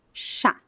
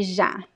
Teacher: the difference between these two pronunciations is that one is voiced and the other one is unvoiced.